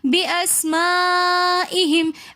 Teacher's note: बिअस्माइहिम के अंदर मद्दे मुत्तसिल हो रही है, तो यहाँ पर भी हम 3 अलिफ की मिकदार खींच कर पढ़ेंगे